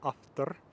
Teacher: I'm pronouncing the P something like what you'll hear is an F but actually I'm pronouncing it as a bilabial fricative it's a little bit more